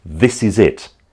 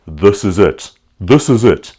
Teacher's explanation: locally we tended to pronounce our I sounds very gutturally. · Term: guttural sound